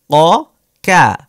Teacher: 4 নম্বর মাখরাজটা ছিল জিহ্বার গোড়া, তার বরাবর উপরের তালুর সঙ্গে লাগিয়ে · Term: কফ